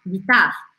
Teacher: aquele r do francês arranhado